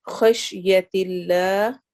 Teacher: اس میں جلالہ کے لام کو ہم باریک پڑھیں گے چونکہ اس سے پہلے والے لفظ کے آخر میں کسرہ زیر آ رہی ہے